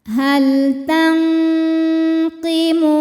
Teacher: Sebab nun sukun menghadapi huruf qaf. Maka nunnya disamarkan siap-siap menuju makhraj huruf qaf disertai bunyi dengung. Jadi dengungnya besar ya, paling eng. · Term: ikhfa ab'ad